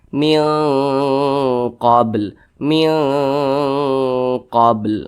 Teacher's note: dengungnya itu dia lebih dominan daripada samarnya. Jadi dia lebih condong berbunyi eng. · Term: ikhfa hakiki ab'ad